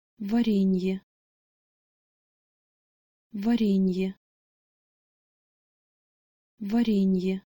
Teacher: But because you have that soft sign between the n and the y, you actually need to pronounce the complete soft consonant ny before you pronounce y. Ny.